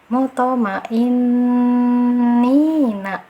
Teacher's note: Karena dia ada sifat qalqalah, jadi ada pantulan kecil.